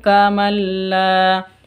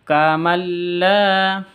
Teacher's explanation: nun sukun bertemu dengan lam. Jadi idgham bila gunnah, masuk tanpa dengung.